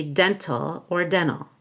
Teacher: we don't have to say the T in Dental but you could